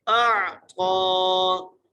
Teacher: من حمزہ کو عین سے ملانا ہے اور طا کے اوپر کھڑی زبر ہے، طا کو ایک مقدار کھینچ کے پڑھنا ہے، طا کو موٹا کر کے بھی پڑھنا ہے